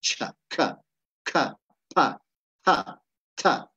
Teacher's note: la pronunciación es bastante aspirada no sería más o menos así botando el aire